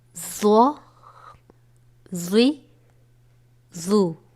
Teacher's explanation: ضا حروف مستعلیہ میں سے ہے جسے ہمیشہ پر یعنی موٹا پڑھا جاتا ہے,